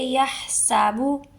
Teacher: یا سابو نہیں بولنا، ہا کو حلق سے نکال کے